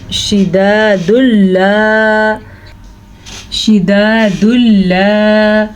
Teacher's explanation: تنوین کے بعد لام آیا ہوا ہے تو یہاں پہ ادغام بلا غنہ کا قاعدہ ہو رہا ہے، یعنی یہاں پہ کسی قسم کا کوئی غنہ نہیں ہوگا